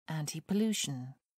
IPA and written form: ˌæntɪpəˈluːʃən (antipollution)